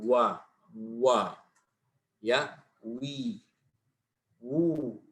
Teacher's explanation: Waqa wa bindimami syafataini ilal amam, artinya memuncungkan ya dua bibir ma'a irtifa'i aqsal lisan, dan terangkat pangkal lidahnya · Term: waw ghairul maddiyah